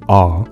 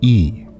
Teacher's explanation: when I make the open Sound a my jaw is in a different position than it is when I say the Clos vowel e so my jaw opens up between E and A you can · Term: vowel height